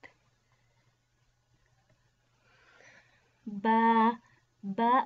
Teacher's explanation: Ba originate from the moist part of the lips.